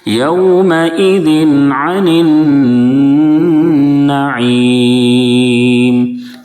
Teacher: یومئذ نہیں پڑھیں گے، یومئذ، 2 زیر کی تنوین کے بعد حروف حلقی کے 6 حرفوں میں سے عین ہے، اس لیے اظہار حلقی ہوگا، تنوین میں غنہ بالکل نہیں کریں گے، بلکہ تنوین کو ظاہر کر کے فوراً آگے بڑھ جائیں گے